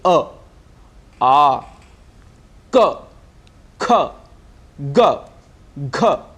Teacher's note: अ और कवर्ग का उच्चारण स्थान कंठ है।